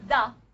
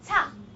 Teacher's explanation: When you say da, voice. Ta is voiceless. Remember, as I said, if you feel a little bit vibration when you say ta, it's not because of the consonant.